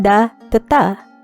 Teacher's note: voiced stops became voiceless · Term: Grimm's law